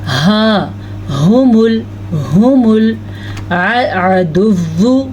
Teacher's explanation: ہا کے تلفظ کا دھیان رکھنا ہے، چھاتی سے اس کی آواز نکلتی ہے، وہ حلق کا آخری حصہ ہے جہاں سے یہ ہا نکلتا ہے، ہا، ہم العدو، عین کے تلفظ کا دھیان رکھنا ہے۔